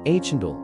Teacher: with the emphasis on the first syllable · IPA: /ˈhændlɪŋ/